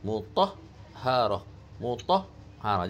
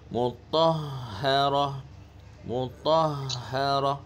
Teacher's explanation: Ha bersifat rakhawah dan ada angin yang lembut. Jangan terputus kat situ.